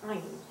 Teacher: There are, however, some speakers of Hebrew who pronounce the ayin as a guttural sound in the back of the throat, unlike any English consonant